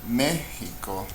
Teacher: me is the louder syllable, it's estrujula, we'll mark it